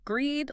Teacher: Because this is a decision, the pitch of your voice should fall slightly at the end to show finality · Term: downward inflection